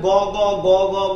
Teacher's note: গ গ গ গ বলবো, কিন্তু উড়ে যাবে না, কারণ গ হচ্ছে অল্প প্রাণ।